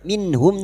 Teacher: nun sukun bertemu ha idhar halki, nun sukun dibaca jelas tanpa mendengung